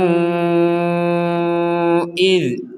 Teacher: Jadi huruf dzalnya jangan sampai dipantulkan. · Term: dzal sukun